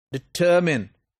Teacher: The second syllable is stressed because it is stronger.